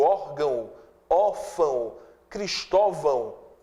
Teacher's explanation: esse O de órgão, órfão e Cristóvão, ele tem som de U. Eu digo órgão, órfão, Cristóvão, é um O muito fraco, que é pronunciado como U, então funciona como semivogal, eu tenho vogal mais semivogal, ditongo decrescente.